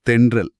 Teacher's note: ந அப்புறம் ர. நாக்கின் நுனி. அன்னத்தோட முன்பகுதிய தொட்டு அதிரும்